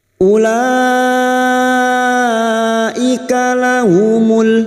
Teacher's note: huruf waw di sini dianggap tidak ada, ya, maka u-nya dibaca pendek. Ulaika lahumul, lahumul lam ta'rif yang bersukun idhar qamariyah.